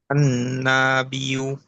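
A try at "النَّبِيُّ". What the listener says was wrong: আন নাবিয়্যু, টান তো দেওয়া যাবে না। আন নাবিয়্যু।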